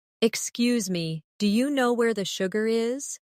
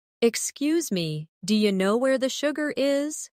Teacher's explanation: Notice how do you changes to d'ya.